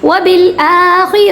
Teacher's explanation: آ کو ہم کھڑا زبر کی وجہ سے یعنی مد اصلی کی وجہ سے 1 سیکنڈ تک اسٹریچ کریں گے